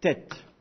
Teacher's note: c'est un T emphatique donc un peu plus dur normalement donc en principe il faut essayer le prononcer en arrière dans la gorge